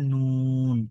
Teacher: নুন অক্ষরটা স্বাভাবিকভাবেই জিহ্বার আগা উপরের তালুর সাথে লাগিয়ে পড়তে হয়, নুন এইভাবে।